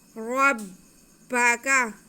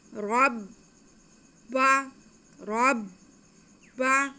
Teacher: रा पे ज़बर है इसलिए इसे हम मोटा करके पढ़ेंगे। आगे बा मुशद्दद है तो रा को हम बा के साथ मिलाएंगे।